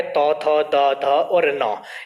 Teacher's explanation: दंतय के अंतर्गत आपका तौ वर्ग आता है, तौ थ द ध और न, ये पांचों वर्ण यहाँ से उच्चारित होते, क्योंकि जब हम मूलतः संस्कृत व्याकरण के आधार पर बात करें या संस्कृत की जो वर्णमाला उसके आधार पर बात करें तो तौ थ द ध का जब उच्चारण करते हैं तो जीभ हमारी दांतों को स्पर्श करती है, इसलिए इन्हें दंतय कहा जाता है